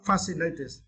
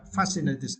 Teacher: for this word, you need to stress the first syllable